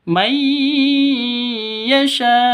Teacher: nun mati atau nun sukun bertemu dengan ya cara bacanya masuk ke ya siap-siap eh maaf masuk ke ya disertai dengung dua ketu dua ketukan karena bacaan idgham bighunah idgham bighunah jadi idgam bighunah itu idgham masuk bighunah dengan deng dengung.